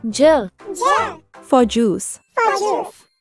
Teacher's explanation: when we say J we start by touching the tip of our tongue to the roof of our mouth and then let the air pop out